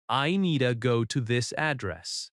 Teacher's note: In natural American speech, need to often reduces to needa. "I needa go to this address." The word to can sound like ta.